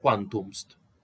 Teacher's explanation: en lugar de escribir quantum est, caiga esta E y se lea quantumst. Eso hay que separar y saber que acá está el verbo sum, prodelición mediante. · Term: prodelisión